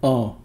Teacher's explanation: the v means the central vowel uh a nasalized schwa